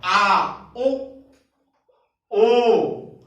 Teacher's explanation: आ, उ, ओ, ये सब क्या है, ओ, औ, जीभ के पश्च वाले भाग पर अधिक कंपन, इसको हम क्या कहते हैं, पश्च स्वर कहते हैं।